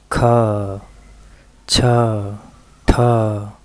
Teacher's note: उनके उच्चारण में अंतिम में श्वास ज्यादा निकलती है तो उसे कहा जाता है कि यह ह का की ध्वनि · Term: महाप्राण